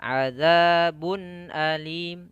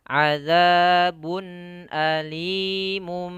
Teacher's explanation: Azabun ada tanwin bertemu dengan hamzah, ini izhar halki. Maka harus jelas tanwinnya.